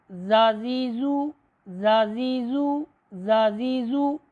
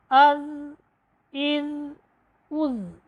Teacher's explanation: ज़ाल का मखरज है ज़ुबान की नोक को सनाया उलिया के जो किनारे हैं वहाँ पर जब हम लगाएंगे तो हरफ़े ज़ाल अदा होगा। ज़ाल ज़बर ज़ा, देखिए मैं ज़ुबान की नोक को सनाया उलिया के जो किनारे हैं वहाँ पर लगा रहा हूँ।